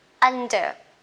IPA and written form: ˈʌndə (under)